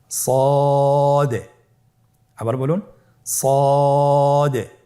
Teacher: জিহ্বার আগা, সামনের নিচের 2 দাঁতের পেট ও আগার সঙ্গে লাগিয়ে উচ্চারিত হয়। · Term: সদ হরফের মাখরাজ